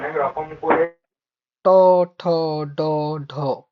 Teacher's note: ডগাটা touch হচ্ছে মুধাতে · জিহার ডগাটা উল্টো করে মূর্ধাকে টাচ করবে। খেয়াল করে দেখো, ট ঠ তুমি উচ্চারণ করো, জিহাটাকে সোজা রাখো, হবে না। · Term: মূর্ধন্য ধ্বনি, মূর্ধন্য ধ্বনিতে